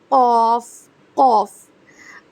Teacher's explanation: پھر آپ کا قوف، آپ کی حلق جو ہے نا اس میں زبان کی جڑ کوے کے قریب نرم تالو سے لگے تو قوف ادا ہوگا